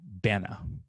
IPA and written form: ˈbænə (banana)